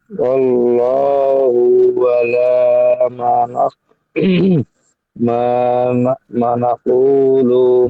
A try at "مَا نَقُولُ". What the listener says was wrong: মা একালিফ টান দেন।